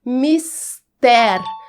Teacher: Isso quer dizer que ela não é uma paroxítona. Trata-se de uma oxítona, ou seja, a sílaba mais forte é a última, ter.